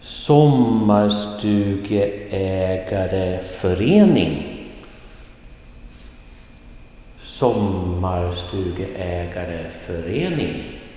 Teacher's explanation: in the middle part of the word, it's just kind of flat, flat, flat, flat, flat, and then rising at the end.